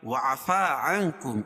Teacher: نون ساکن کے بعد حروف اخفاء کے 15 حرفوں میں سے کاف ہے تو یہاں ناک میں آواز کو چھپا کر پڑھیں گے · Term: اخفاء حقیقی